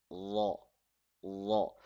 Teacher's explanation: So the tip of the tongue will be touching at the back side of the upper tooth in the letter law.